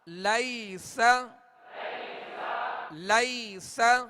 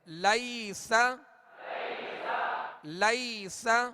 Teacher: لام یا زبر لئی، سین زبر سا، لیس، لیس. یہاں یا لین ہے، اسے نرمی کے ساتھ بغیر کھینچے بغیر جھٹکا دیے معروف پڑھیں گے.